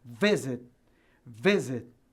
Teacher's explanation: Porque a sílaba tônica tá, a força tá no VI